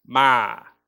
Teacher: with a flat tone that means to come